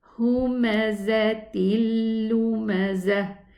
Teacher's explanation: We are going to merge this tanween into the lam. The noon sukoon is going to merge into the lam without a ghunna, a complete merging, complete idgham. Idgham kamil.